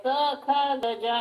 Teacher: ಹೇಳುವಾಗ ಗಮನಿಸಬಹುದು ಎಲ್ಲ ಕಡೆ ಪೂರ್ತಿಯಾಗಿ ಸ್ಪರ್ಶವಾಗಿಬಿಡುತ್ತೆ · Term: ಸ್ಪರ್ಶವರ್ಣಗಳು